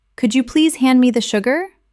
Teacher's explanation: my voice rises on could you and falls gently at the end